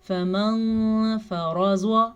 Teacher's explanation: فمن فرض، نون ساکن کے بعد فا حروف اخفا میں سے ہے تو ہم نون ساکن کی آواز کو چھپے ہوئے غنّے کے ساتھ پڑھیں گے · فمن فرض، را کو پر پڑھیں گے، را پہ زبر ہے، زواد کو پر پڑھیں گے کیونکہ زواد تو ویسے ہی پر پڑھا جاتا ہے، زبر زیر پیش ہر حال میں پر پڑھا جاتا ہے۔